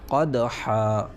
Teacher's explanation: یہ تنوین الف سے بدل جائے گی اور ایک الف کے برابر کھینچ کر حرف مدہ کی طرح پڑھا جائے گا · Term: مد عوض